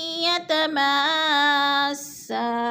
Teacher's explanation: یتماسا، اور یتما پہ جو ہے مد متصل ہے، حروف مدہ کے بعد حمزہ اسی کلمے میں ہے تو مد متصل 4 الف مد ہے، ہم نے اس کو 4 حرکات کے برابر لمبا کر کے پڑھنا ہے